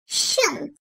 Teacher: Dil ortası ile üst damağın ortasından çıkarılır.